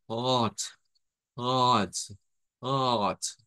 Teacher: hacer sonar una palabra como hot, hot, hot, con esa T al final, pero que se aspira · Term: T aspirada